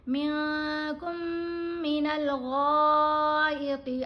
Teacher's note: غین کو ہم نے موٹا پڑھنا ہے، طا کو بھی موٹا پڑھنا ہے. غین کے اوپر مد ہے، 5 الف کی مقدار جتنا غین کو لمبا پڑھا جائے گا.